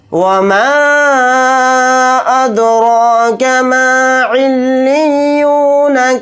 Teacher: یہاں پر الف مدہ ہے یعنی حروف مدہ، اس کے بعد حمزہ آ رہا ہے دوسرے کلمے میں الف کی شکل میں، تو اس میں مد منفصل کا قاعدہ ہو رہا ہے. اس مد کو ہم 3 الف کی مقدار کھینچ کر پڑھیں گے میم الف زبر ما کے ساتھ. اگر یہاں پر ہم آیت کرتے ہیں، سانس توڑتے ہیں، تو نون کو ساکن بنا کر پڑھیں گے.